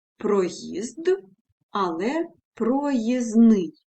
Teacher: вимовляють тобто мовці спрощують для себе вимову наприклад проїзд але проїзний незручний звук д випадає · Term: спрощення приголосних